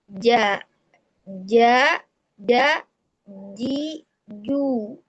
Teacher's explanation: tengah lidah rasa menempelnya ke tengah langit-langit atas · Tertahan nafas ketika mengucapkan huruf jim. Nah, itu yang pertama sifatnya jahar. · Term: jahr